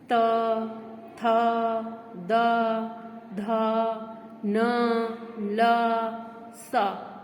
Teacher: दांत से हमारी जीभ टकराती है